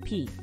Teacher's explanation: closing and releasing your lips with a burst